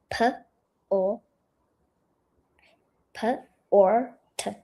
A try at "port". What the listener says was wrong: Yeah, don't add a R. There's no R. It's just, well, there can be, but I mean, the way we've sounded it is like this.